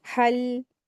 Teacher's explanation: ये ध्यान रखते हुए पढ़ेंगे कि हल जब पढ़ें तो इस पे कलकला ना हो